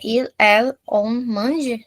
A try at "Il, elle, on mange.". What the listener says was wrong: Parfait.